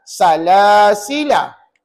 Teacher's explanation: La tu dibaca pendek. Tak boleh baca salasila 2 harakat, tak boleh. Bila wasal, maka la itu ataupun alif itu dibuang, maka dibacalah dengan perkataan salasila.